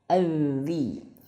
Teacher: ujung lidah menyentuh ujung gigi seri atas